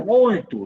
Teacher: A palavra muito, você coloca e sai muito, sai pelo nariz. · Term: nasal